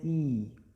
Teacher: संवृत्त में मुख कम खुलता है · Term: संवृत्त स्वर